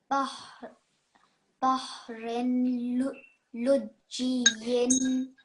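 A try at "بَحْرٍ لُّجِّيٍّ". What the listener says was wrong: So the rin, there shouldn't be a nasal sound produced here, okay? It says again here at the top. So we've got a ra mushaddad. No, a lam, sorry, mushaddad. And before that we have a tanween. So it says here, if there is a tanween, only one stroke of that tanween should be used.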